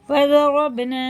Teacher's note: با میں قلقلہ، یعنی اس کی آواز ٹکر کھا کے، اس کے مخرج ٹکر کھا کے الگ ہو جاتے ہیں، ٹوٹتی ہوئی آواز سنائی دیتی ہے